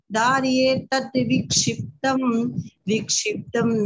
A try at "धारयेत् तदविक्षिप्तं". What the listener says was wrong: यहाँ पर द का उच्चारण स्पष्ट होना चाहिए। धारयेत् तद विक्षिप्तम,